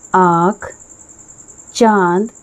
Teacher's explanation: अनुनासिक यह चंद्रबिंदु इसका उच्चारण नाक और गले दोनों से होता है